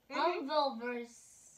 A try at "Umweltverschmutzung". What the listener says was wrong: Okay, that's a ooh. Fun. That's not a U. That's ooh. Okay, so we know that so a TZ is pronounced T. schmutz. Okay, so it's pronounced Umweltverschmutzung.